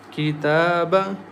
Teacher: Ta has standing fatha. We stretch the sound for two counts